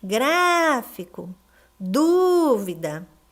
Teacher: A antepenúltima são as sílabas mais fortes, são as sílabas tônicas. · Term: proparoxítona